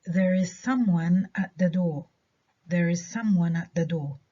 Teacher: one هنا ما أخدتش ستريس، اللي أخدتها هي some